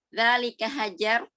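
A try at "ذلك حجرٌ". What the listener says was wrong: Dibaca harokat terakhirnya. Dzalika Dzalika hajarun.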